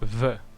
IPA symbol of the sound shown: β